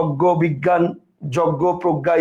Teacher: আচ্ছা, এরপর দেখেন এই যে এটাই আপনার এখানে সুন্দর করে দেওয়া আছে, জয়ের পরে ইয় যুক্ত হলে গ গয়ের মতো উচ্চারণ হয়।